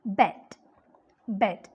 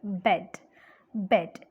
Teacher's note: the front of the tongue is raised but it is just somewhere between half close half open